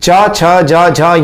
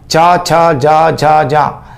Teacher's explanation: इसमें तालु से स्पर्श होता है जीभ का, च छ ज झ झ, इस तरह से तालु से स्पर्श होगा। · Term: च वर्ग